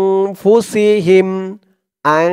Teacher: তানবিনের পরে ইকফার সেই 15 হরফের যে কোনো একটি হরফ আসলেই ইকফা নাকের ভিতরে লুকিয়ে গুন্নাহ করে পড়তে হয় এখানে দেখুন নুন সাকিনের পরে ইকফার 15 হরফের এক হরফ ফা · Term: ইকফা গুন্নাহ